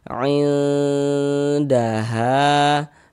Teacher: Jadi bagian ainnya itu suaranya itu kita tahan, kita panjangkan sebentar sepanjang 2 harokat. Ain daha, danya pendek ya, ainnya yang kita gunakan, yang kita tahan sebentar tuh.